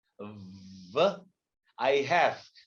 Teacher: We both say wow, not wow. This is a V, lower lip touching the upper denture.